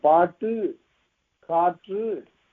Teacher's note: ஆனால் பாட்டு, காற்று என்று சொல்லுகிற போது இதழ் குவியவில்லை. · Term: குற்றியலுகரம்